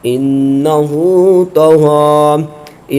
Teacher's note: یہاں پر نون مشدد ہے، اس میں غنہ کریں گے اور الٹا پیش ہے، اس کو کھینچ کے پڑھیں گے۔